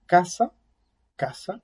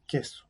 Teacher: el contacto o el cierre de la oclusión es atrás, y cuando articulo la palabra queso, es un poquitito más adelante, en la zona posterior del paladar